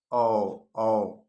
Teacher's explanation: कंठ से जिसे बोला जाए कंठ और ओष्ठ दोनों से बोला जाए। ए ए औ औ कंठ और ओष्ठ दोनों का प्रयोग होता है औ में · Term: कंठोस्थ्य ध्वनि